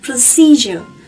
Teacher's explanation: các bạn nhớ phải nhấn vào âm tiết thứ hai nhé